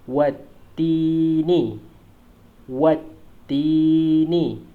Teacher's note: Hamzah wasal ni kita tak sebutkan dia.